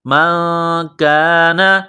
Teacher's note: قل من كان عدوا لجبريل قل من كان، یہ نقطہ والا قاف ہے، اس کو موٹا کرنا ہے، قاف کو لام کے ساتھ ملانا ہے، قاف لام پیش قل من كان، نون ساکن کے بعد کاف ہے، حروف اخفا ہے تو نون ساکن پر غنہ کریں گے، آواز ناک میں چھپائیں گے۔ من کان، کاف کو باریک کرنا ہے۔